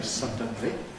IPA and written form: ˈsʌdənli (suddenly)